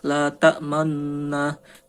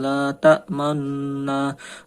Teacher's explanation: Contohnya itu la ta'manna, itu dibaca, nunnya itu dibaca dengan mencucu, dan ismamnya setelah idgham huna.